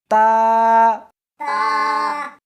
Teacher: اس حرف کو زبان کے اوپر کے تالو سے ملا کر پڑھیں گے۔